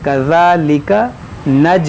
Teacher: یہ جیم میں قلقلہ ہوا